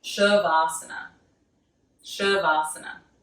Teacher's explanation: An A with a line, a flat line over top of it is a long A, like an ah sound.